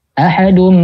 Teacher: nun mati atau tanwin bertemu dengan ba dibacanya ikqlab Oh iya berubah jadi mim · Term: iklab